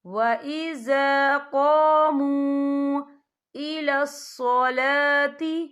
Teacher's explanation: وَإِذَا قَامُوا، یہ دیکھیں وَإِذَا قَامُوا، یہاں پہ واو مدہ بھی ہو رہا ہے، واو ساکن ہے، واو ساکن سے پہلے پیش ہے اور اس پہ چھوٹی سی مد بھی ہے تو ہم یہاں 3 یا 4 حرکت کے برابر کھینچ کے پڑھیں گے۔